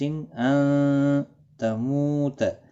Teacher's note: نون ساکن کے بعد حرف اخفا کا تا آیا ہے، اخفا حقیقی ہوگا، گنہ کے ساتھ پڑھیں گے